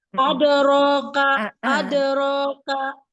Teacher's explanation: kalau qalqalah dia lebih cepat ya durasinya karena setengah harakat aja